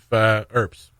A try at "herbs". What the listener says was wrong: Where did the H go on herbs then? There's an H. It's like the people. It's like the people who say an hotel. Like, no, it's got a hard H.